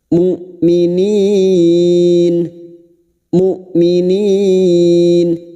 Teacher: huruf hamzah sukun ya ini Hamzah bukan Ain Maka jangan tertukar Hamzah memiliki sifat jahar dan syiddah yaitu tertahannya suara dan tertahannya nafas